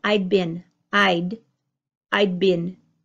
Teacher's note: the D is almost completely gone in my pronunciation you don't hear I'd space bin you hear I'd been ID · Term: the D almost disappears